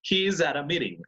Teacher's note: Yes, at a. Entre el at y el a son dos palabras, pero se hacen como solo una al pronunciarlo con fluidez